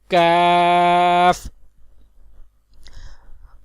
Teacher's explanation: کیف زبان کی جڑ اور تالو کے سخت حصے سے ادا ہوتا ہے